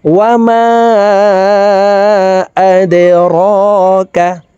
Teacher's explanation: এই মিমে 3 আলিফ টেনে পড়তে হবে, কারণ মদের হরফের উপরে চিকন চিহ্ন বা মে হামজা মধ্যে মুনফাসিল 3 আলিফ টানিয়া পড়িতে হয়।